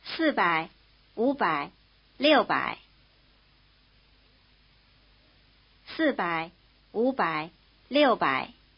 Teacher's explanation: Notice that the low tone of wu changes to rising tone in combination.